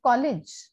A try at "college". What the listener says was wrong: College. It's short E. No, there is no A. It's E.